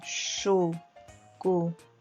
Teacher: na palavra chocolate, a sílaba mais forte é o lá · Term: sílaba tônica